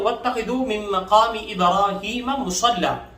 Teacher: واتخذوا کی خاء کو ہم موٹا پڑھ لیں گے اور تا کو باریک پڑھیں گے، دال کو نرمی سے پڑھیں گے